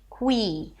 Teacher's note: we have a K sound and a W, kwa, and then we shift to a high E as in C